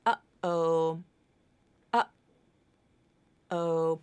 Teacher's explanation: It's that period between those two sounds, uh-oh, where there is no sound. It's the absence of sound. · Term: glottal stop